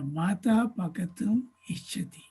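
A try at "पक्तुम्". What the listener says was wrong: It is not pakatum. It is paktum. Half ka. Paktum. Mata paktum.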